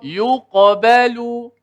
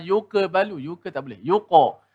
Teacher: Ini adalah qalqalah sughra yang paling ringan sekali. Walaupun huruf qaf tu tebal, tu bunyi tebal. Tapi dia punya masa dia tak boleh kita lamakan.